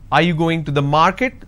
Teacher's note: this is going up because the last word denotes like it's a question